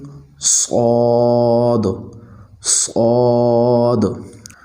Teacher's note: لفظ صاد موٹا اور پر پڑھا جائے گا